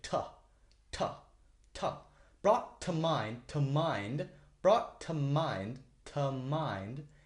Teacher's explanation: you make small words like to sound like T because you don't want to focus on them usually you want to make them shorter because they're only there